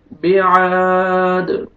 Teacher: रब्बुक बिआद, आइन अलिफ मद्दा, आइन को आपने खींचना है एक अलिफ के बराबर। दाल जब स्टॉप करेंगे साकिन हो जाएगा और दाल पे कलकला करेंगे डबल साउंड आएगा।